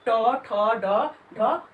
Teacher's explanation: हमारा जीभ का जो अगला हिस्सा है वह मूर्धा से जाकर के स्पर्श होता है